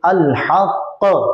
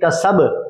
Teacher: मुशद्दद कलकले में जमाव किया, और जमाव में क्यों किया, ताकि दो हरूफ पर दलालत हो जाए